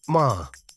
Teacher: tone one is a steady high pitch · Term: Tone 1